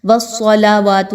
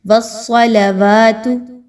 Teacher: लाम को मोटा नहीं करना व सलावातु नहीं कहना बल्कि लाम बारीक स्वाद मोटी